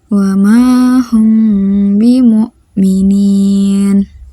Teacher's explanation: Cara membacanya yaitu samar-samar. Artinya, pada saat membaca mim sukun disamarkan antara mim dan ba dan terdengar seperti didengungkan. Contohnya, wa ma hum bimu'minin. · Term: ikhfa syafawi